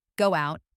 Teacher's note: When one word ends in a vowel and the next word begins with a vowel, native speakers often insert a tiny w or y sound to link them smoothly